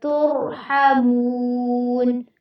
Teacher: تر میں تا کو باریک رکھنا ہے لیکن را کو آپ نے پر کرنا ہے